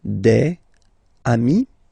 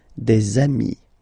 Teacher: Okay, and so you've got des ami, okay? And if you make the liaison, so the link between the two, you will get des amis